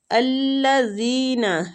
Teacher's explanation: الذین زال نرمی کے ساتھ کھینچیں گے، یا مد ہو رہی ہے۔